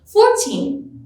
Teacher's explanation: 14 receives stress or emphasis on its second syllable.